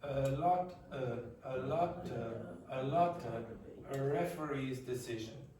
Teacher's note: That's the schwa that I told you about before, the laziest sound in the language. Your tongue is in the intermediate position, it's not very forward, it's not very back, your mouth is not very open, it's not very closed.